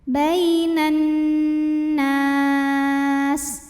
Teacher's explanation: Kemudian nunnya gunnah musyaddadah karena nun bertasydid. Cara bacanya dengung, bunyi N-nya tahan kurang lebih 2 harokat.